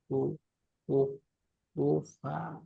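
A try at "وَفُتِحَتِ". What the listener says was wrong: আমি একটা কথা বলি দেখেন, আপনার পড়েননি ফা পেশ কি পড়েছেন? একদম স্পষ্ট, এখানে দেখবেন ফু আছে, দেখেন ফা পেশ ফু, ফা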